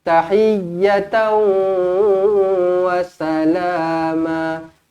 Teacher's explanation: Muncungkan bibir masuk dekat huruf waw, dengungkan idgham ma'al gunnah.